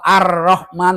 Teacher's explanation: Alif lam syamsiyah kalau didengar seolah-olah tidak ada huruf lam.